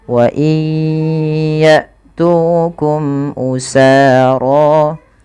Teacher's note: masukkan bunyi nun kepada huruf ya karena dia ada idgham bi gunnah, yaitu terjadi ketika ada nun sukun bertemu dengan huruf ya, maka masukkan nunnya kepada huruf ya dan ditahan.